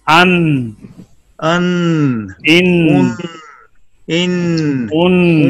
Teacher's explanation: start using corner of tongue touching base of teeth or gums of front corner teeth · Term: नून